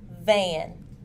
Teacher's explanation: V is made using the lips and teeth. It is a fricative sound and is voiced. The vocal cords vibrate.